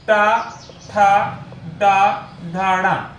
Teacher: टा वर्ग देखेंगे तो इसका उच्चारण मूर्धा होता है